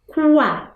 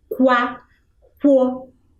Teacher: você consegue perceber a presença da vogal u